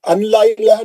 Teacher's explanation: نون ساکن کے بعد لام ہے کیا ہوگا ادغام بلا غنہ ہے آپ نون نہیں پڑھیں گے سیدھا لام میں جائیں گے